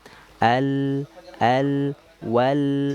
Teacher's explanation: memiliki sifat tawassud, bainiyah, mengalir tapi sedikit